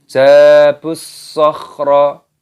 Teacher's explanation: Terdapat huruf ba ini tidak dipanjangkan. Perhatikan langsung dimasukkan ke dalam huruf shad. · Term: alif lam syamsiyah